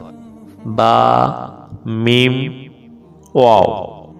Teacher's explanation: 15 নম্বর মাখরাজ দুই ঠোঁট হইতে উচ্চারিত হয়